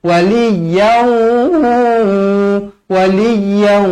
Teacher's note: Tanwin yang tidak selari bertemu huruf waw, hukumnya di sini idgham ma'al gunnah. Wajib dibaca dengung 2 harokat.